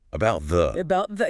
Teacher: Two of them in about the final T is stopped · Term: stopped T's, stopped T